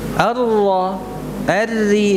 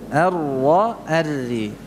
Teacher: ra yang bertasydid itu jangan dibaca dengan menampakkan sifat takrirnya dengan begitu jelas